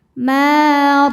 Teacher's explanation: karena ada alif sebelumnya fathah. Cara bacanya panjang dua harakat. Maa dbaca tafkhim. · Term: mad thobi'i zohiri